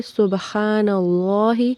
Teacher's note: اللہ تعالیٰ کے لام کو موٹا پڑھیں گے